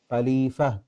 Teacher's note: تا ہا بن جائے گی نا یہاں پہ آگے وقف ہے